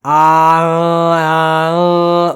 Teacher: know is nasalized vowels when I say nasalized it means that whenever you're pronouncing the vowel in addition to air flowing out of your mouth it also goes out through your nose at the same time and that alters the tone of it so a in that · is basically just an a sound plus nasalization